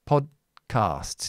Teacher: Don't explode the D.